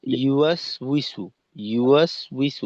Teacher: কোন প্রকার টান গুনা নেই এখানে